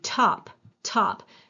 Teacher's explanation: But if you do top, you can feel this little wisp of air. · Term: aspiration